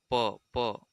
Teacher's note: स्थान क्या है प प ओट प देखिए बोल के देखिए ओट से उसका उच्चारण हो रहा है तो प वर्ण का उच्चारण स्थान ओट है 47 नंबर प्रश्न